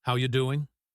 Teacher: The words how and are and you become one single sound, how ya. This is called connected speech.